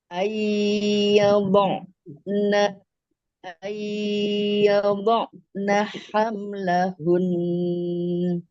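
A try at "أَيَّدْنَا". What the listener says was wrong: Ini ianya agak tebal. Jadinya ianya udah diancang-ancang ke bot.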